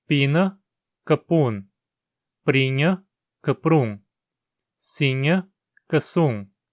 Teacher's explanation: Se o radical tem um I curto, ele se torna um U curto.